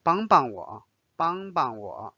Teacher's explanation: if you just repeat 帮 帮 the second 帮 will be read a little bit lighter. So it's like no tone. It's neutral again.